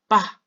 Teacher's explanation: 번째 글자는 입에서부터 올라온 공기가 입술에 삶도 막혀 쬲 그래서 빠 입술에 방해를 한번 받아서 나오게 된 거예요